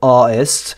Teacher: En fait, en accent donc britannique soutenu, on dirait artist. En accent de Londres un peu informel, on va mettre un stop glottal